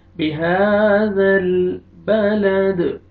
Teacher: زال کو نرمی سے ادا کر کے لام کے ساتھ ملانا ہے اور لام کو آپ نے حرکت نہیں دینی، ہلانا نہیں آپ نے۔